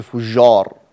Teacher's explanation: فأنت أرخيت أو جعلت الجيم رخوة